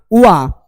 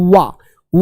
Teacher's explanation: अब दंतोष्ठ से क्योंकि दांत और होंठ, वा के उच्चारण में दांत और होंठ आपस में क्या है? परस्पर मिलते हैं।